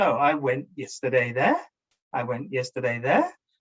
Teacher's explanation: we just rise the intonation to show there's a mistake somewhere within that sentence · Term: Rising intonation